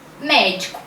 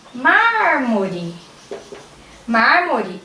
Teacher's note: proparoxítona são aquelas palavras em que a antepenúltima é a mais forte